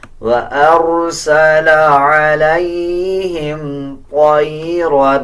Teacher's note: طا کو پر یعنی موٹا پڑھا جائے گا، را کو بھی پر پڑھا جائے گا